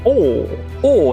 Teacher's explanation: O nome técnico é vogal, baixa posterior e arredondada. E o apelido dele é o ovo na boca ou britânico, que é assim, ó.